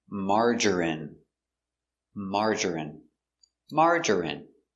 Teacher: 3 syllables, stress on the first syllable.